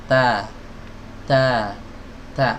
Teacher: ada hams tapi sedikit sekali, ya. Sedikit sekali, hampir tidak terdengar, ya. Bukan tidak ada hams sama sekali, karena hams ini adalah sifat lazimah, sifat yang selalu melekat pada huruf ta, tidak bisa dilepaskan dari huruf ta.